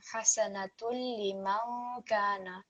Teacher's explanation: It's not an entirely clear noon, it's like a hidden noon, a partial noon. · We are slightly prolonging and we're producing the Ghunna sound. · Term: light nasal sound